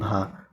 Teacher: ओष्ठ जो है महाप्राण घोष व्यंजन वर्ण का उदाहरण है